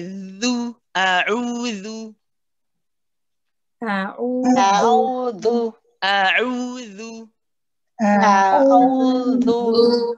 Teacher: You've got your tongue. Your tongue very gently and lightly touches the top 2 incisors.